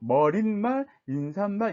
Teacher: 근데 일상생활에서 우리는 머리말, 인사말 이렇게 발음하지 않고 머릿말, 인사말 이렇게 니은음을 첨가해서 발음하는 사람들이 굉장히 많거든요. 이 사람들은 사실은 머릿말, 인사말, 사이시옷 표기를 한 거와 똑같은 거죠.